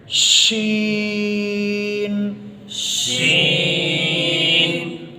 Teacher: شین کی ادائیگی میں آواز جو ہے وہ منہ میں پھیل کر نکلتی ہے، کیونکہ اس میں صفت تفشی ہے۔